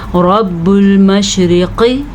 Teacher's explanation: رب را کو موٹا کر کے پڑھنا ہے کیونکہ را کے اوپر زبر ہے۔ اگر را کے اوپر زبر اور پیش ہو تو را موٹی پڑھی جاتی ہے، پر کر کے پڑھی جاتی ہے۔